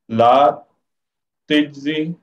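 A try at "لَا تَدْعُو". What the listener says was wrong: ये जा के ऊपर पेश पढ़ेंगे ला तज्जू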